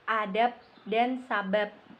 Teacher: Fonem B pada silaba akhir kata adab dan sebab diucapkan P, adab dan sabab, yang persis sama dengan pengucapan fonem P pada atap dan usap. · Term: netralisasi, Netralisasi